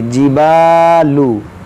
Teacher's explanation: जीम को नहीं खींचेंगे, बा को अलिफ के साथ मिलाकर खींचेंगे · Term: अलिफ मद्दा